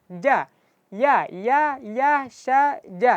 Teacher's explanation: Syin dan jim ketika dibaca jangan sampai dimoncongkan, jangan sampai bibirnya digerakkan. Karena jim, syin, dan ya satu makhraj. Jadi, satu tempat keluar hurufnya.